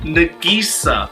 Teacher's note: They're treating the Nag in her name as Na and converging the G to the next syllable.